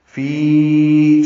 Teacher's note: فی یا مدہ ہے، اس کے بعد حمزہ آنے کی وجہ سے مد منفصل ہے. فی 4 حرکات لمبا کریں گے